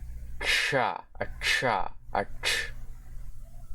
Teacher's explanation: Alright, now we have a retroflex affricate. This is the voiceless retroflex sibilant affricate consonant.